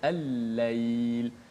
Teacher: Jadi macam contoh al-lail, lam mati jumpa dengan lam juga. Nak baca macam mana? Jadi dibaca dengan idgham. Lam itu dimasukkan ke dalam huruf.